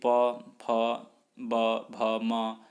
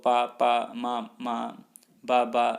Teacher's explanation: प वर्ग ओष्ठ्य ध्वनियाँ हैं जो ओष्ठों को मिलाकर बोली जाती है। उच्चारण करने में सरल है।